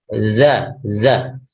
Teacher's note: Kalau za dia ujung lidah bertemu dengan gigi seri atas dan bawah, za. Kemudian huruf shin, nah ini dia sifatnya tafashi atau menyebar, sha, shi, shu ya.